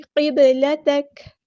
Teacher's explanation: با ساکن پر کلکلا ہو رہا ہے ، اور کاف کو ہم ساکن کر دیں گے وقف کرتے